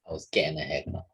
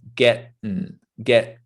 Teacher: we kind of only do half of that t sound right the tongue kind of goes up to the top to make the t but we don't come down